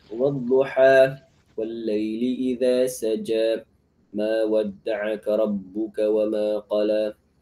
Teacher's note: cara membaca alif maqsurah sama persis dengan alif. Sama-sama berfungsi sebagai mad asli dua harakat dan dibaca dengan fathah yang sempurna, tidak diimalahkan.